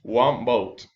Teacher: It can only be done accurately in slow, carefully speech. If we are speaking rapidly, we turn the alveolar nasal N into a bilabial nasal M, so that we are already prepared for the bilabial B in short. We skip one step, alveolar, and go directly to the next word, bilabial. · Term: assimilation